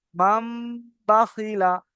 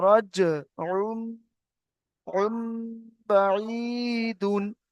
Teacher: তানবিনের পরে বা আসলে কি হবে তাহলে, নুন সাকিন ও তানবিনের আওয়াজটাকে মিমের দ্বারাই পরিবর্তন করে পড়তে হবে। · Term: ইকলাব